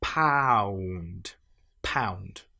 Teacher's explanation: In each of these, notice how we start saying a short vowel sound a and we end with a vowel sound oo.